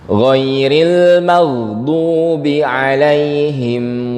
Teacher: karena makhrajnya itu pangkal lidah naik ke kasrah turun dia jadinya ada suara yang melengkung